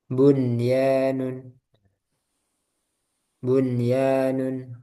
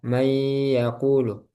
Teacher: nun sukun bertemu ya, tapi dia dibaca jelas.